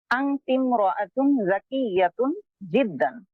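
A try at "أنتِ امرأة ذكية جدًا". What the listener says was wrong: জি ঠিক আছে।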